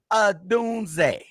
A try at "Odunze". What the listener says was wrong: You know, see, you be just talking too fast. I know you know how to say it.